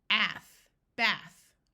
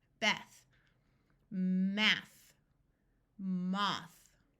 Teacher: The most common sound of TH is the unvoiced sound of th. If you put your hand on your voice box on the front of your throat and do the sound of th, you do not feel any vibrating.